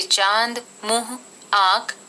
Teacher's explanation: अनुनासिक इसका उच्चारण नाक और मुंह दोनों से होता है इसको चंद्र बिंदु भी कहते हैं इस का चिन्ह होता है